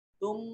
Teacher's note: तुम मीम मुशद्दद है, गुन्ना वाजिब होगा।